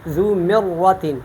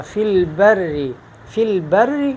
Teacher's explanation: تو ذو مرۃ یہ پر ہے، فی البر یہ باریک ہے